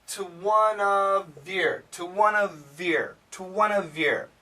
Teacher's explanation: it doesn't say to, it's more of a t.